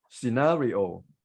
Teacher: We tend to stress the final syllable, which is not correct. So the stress is on second syllable. So it should be as British pronunciation, scenario.